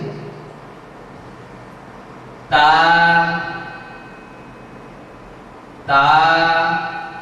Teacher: জিহ্বার আগা আমরা লক্ষ্য করছি সামনে এই দুই দাঁতের গোড়ার সঙ্গে জিহ্বার আগাটা লেগে যাচ্ছে ভিতরের সাইড। তা তা। আমরা সবাই আরেকবার একসাথে বলে নিচ্ছি।